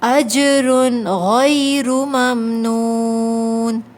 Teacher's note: را کے اوپر تنوین ہے لیکن ہمیں غنہ نہیں کرنا۔ کیوں نہیں کرنا کہ اس کے بعد حروف حلقی حمزہ آ رہا ہے، جب حروف حلقی میں سے کوئی حرف آ جاتا ہے تو غنہ نہیں کیا جاتا، تو ہم یہاں پر غنہ نہیں کریں گے اجرن پر۔ · آخر میں واو مدہ ہے، نون یہاں پر کھینچیں گے 2 کاؤنٹس